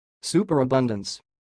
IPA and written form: ˌsuː.pər.əˈbʌn.dəns (superabundance)